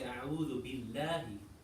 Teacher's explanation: when Allah is pronounced with a kasra before it, what happens to Allah? What happens to the lam in Allah? It becomes light.